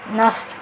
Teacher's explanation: Kemudian nafs ini dia punya sifat isti'la, artinya suaranya tinggi dan terangkat. Jadi suaranya terangkat ya.